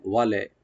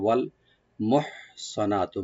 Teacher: ওয়া ওপেন রাখবেন আর লামে কোনো কলকালা করবেন না। ওয়াল, ওয়ালে, ওয়ালে না, এরকম না, ওয়াল মোহসানাতু, মোহ হাটাকে একটু হামস করবো আমরা, গলার মাঝখান থেকে আনবো।